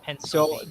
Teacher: there's no vibration when we sound the P. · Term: unvoiced P